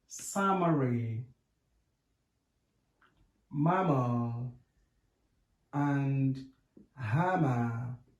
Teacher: It is a voiced bilabial nasal. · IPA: /m/